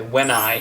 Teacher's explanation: we would say when I, as if it was one word